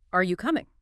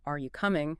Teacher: If your voice falls at the end, are you coming? It might sound like a statement of fact · when asking a simple yes-no question, your tone often rises sharply at the end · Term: upward inflection